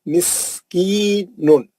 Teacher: دوسرا پڑھ رہا ہوں، علیکم مسکین، علیکم مسکین، علی میں لین ہے، میم ساکن کا ادغام شفوی حرف میم ہے. مس، سین کی سیٹی مارنا، پھر مد اصلی ہے